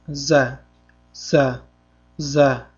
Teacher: Za harfi shovqinli jarangli undosh tovushni beradi. O'zimizning o'zbek tilimizdagi z harfi kabi talaffuz qilinadi.